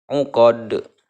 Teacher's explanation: Dikumpulkan dalam kalimat kut bujadin. Cara membacanya adalah memantulkan huruf qalqalah dengan benar-benar jelas, besar dan tebal. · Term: qalqalah kubro